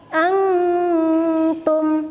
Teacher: Cara baca ikhfa itu menyamarkan huruf nun mati atau tanwin seperti eng, serta ditahan sekitar 2-3 harkat sebelum menyebut jelas huruf di depannya